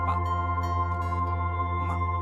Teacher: आप बिना होठों को मिलाए पा बोलिए। पा बोलेंगे तो दोनों होंठ मिल जाएंगे, मुंह बंद होगा।